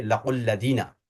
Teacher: جو حرف مدہ واو ہے اس کے سکون کو ہم ڈراپ کر لیں گے